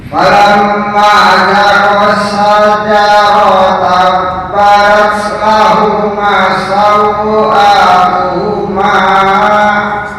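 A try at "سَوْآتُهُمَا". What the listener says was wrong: Jangan panjang-panjang. Sawatuhuma. Tuhuma. Nah, hanya dua harokat ya, jangan lebih. Oke, syajarata pendek semua ya. Syajarata badat lahuma sawatuhuma.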